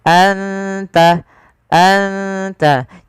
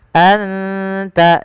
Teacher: An tazbahu baqarah, an tazbahu baqarah. Anta, ada bacaan ikhfa hakiki, yaitu suara nunnya disamarkan ke huruf ta. Anta, anta, tidak dibaca anta, anta, tapi anta, terdengar samar-samar suara nun kepada huruf ta.